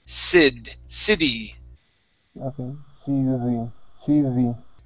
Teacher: Switch the T to a D sound. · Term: flap T